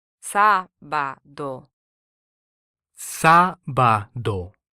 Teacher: Here the first syllable is stressed due to the written accent rather than the second syllable.